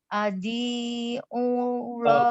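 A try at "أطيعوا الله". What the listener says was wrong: Ati'u. Ta itu bukan dha ya. Ingat. Apa bukan dha. Ati'u. Bukan adi'u.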